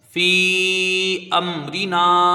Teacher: را کو باریک پڑھا جائے گا